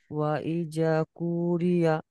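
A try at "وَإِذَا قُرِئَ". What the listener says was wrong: কু টান দিচ্ছেন কেন, কোন কিসের জন্য টান হচ্ছে, কুরিয়া বলছেন কেন, কুরিয়া। জাটা টান দেন, ইজা কুরিয়া।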